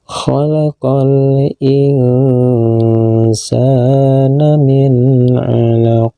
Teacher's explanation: huruf k yang dihentikan membacanya dengan pantulan suara yang kuat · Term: Qalqalah Kubro